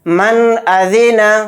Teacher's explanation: نون کی آواز کو ظاہر کر کے بلا غنہ کے جلد پڑھنا ہے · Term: اظہار